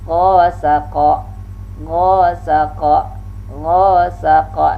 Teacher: gha ini ingat juga termasuk al-isti'la dengan mengangkat pangkal lidah. · qa ini termasuk syiddah sifatnya. Huruf lisani pangkal lidah dengan langit-langit dekat dengan pita suara.